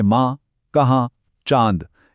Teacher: दूसरी किस्म है नून गुन्ना। यह वो नून है जिसकी आवाज पूरी तरह मुंह से नहीं बल्कि नाक के नथनों से निकलती है एक गुनगुनाहट की तरह।